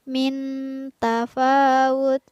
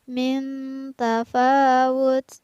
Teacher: ada nun sukun yang bertemu dengan huruf ta, maka nun sukunnya dibaca samar.